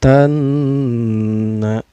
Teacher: Cara bacanya alif lamnya tidak dibaca, melainkan memasukkan dari huruf ta ke huruf nun ya. Tanna. Nunnya ini dihukumi gunnah atau didengungkan ya, karena nun bertasydid ini hukumnya gunnah artinya guna itu didengungkan. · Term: alif lam syamsiyah